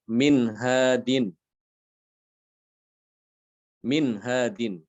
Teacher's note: Ada nun sukun, setelahnya datang huruf ha ya, jadi nunnya dibaca jelas.